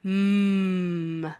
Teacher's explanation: The M, where the closure is at your lips, so you can see our voice comes out from our voice box, up into our mouth, bounces around, comes back up through our nose, and out our nostrils.